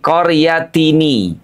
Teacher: Karena jika ahla qaryatis tat'ama berarti ada huruf yang dihilangkan, yaitu nun sukun. Sementara pada kalimat ahla qaryatin itu ada bunyi nun sukun yang harus kita pertahankan. Nah, untuk menyelamatkan bacaan keduanya, maka bunyi nun sukun pada kalimat qaryatin itu dihidupkan dengan menambah harokat menjadi qaryatini.